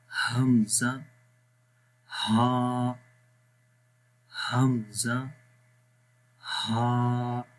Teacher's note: हमज़ा का मखरज सबसे नीचे वाला हिस्सा है।